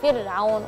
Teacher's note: Fir'aun udah satu kali getaran sudah cukup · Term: huruf ra yang sukun